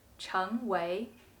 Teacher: when it means to become or to be it should be pronounced the second tone